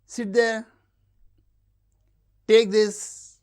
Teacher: Commands and requests with low-rise.